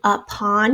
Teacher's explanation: you can hear that schwa in that first syllable up, or actually it's almost like a U anyway.